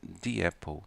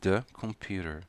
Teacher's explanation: Falamos de com som de i quando a palavra na frente iniciar com uma vogal.